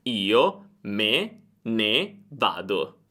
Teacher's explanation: Me ne vado deve essere pronunciato come un'unica parola, perché me e ne non hanno un accento, ma prendono l'accento di vado. Questa è una semplificazione, però quando ti trovi in una situazione del genere, pronuncia tutto come un'unica parola.